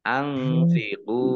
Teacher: Nun sukun bertemu dengan huruf fa, bacaan ikhfa, dibaca samar-samar.